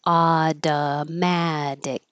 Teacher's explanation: This T changes to a D, this T changes to a D, and the final C at the end is a K sound that you won't release. Automatic. Just hold that tongue in the K position.